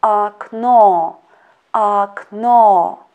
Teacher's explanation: And as I already told that in such variant, we should pay attention to the stress. In this word, akno, second letter O is under the stress. That's why first letter O we pronounce as A.